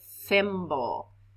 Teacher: no i didn't feel my throat vibrate it did not vibrate so thimble is unvoiced